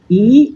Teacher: রস্বই হচ্ছে জীবের অবস্থান অনুযায়ী এটা সম্মুখ স্বরধ্বনি। যদি ঠোঁটের উন্মুক্তির দিক থেকে দেখি তাহলে এটা হচ্ছে সংবৃত এবং জীবের উচ্চতা হয় এটাতে উচ্চ।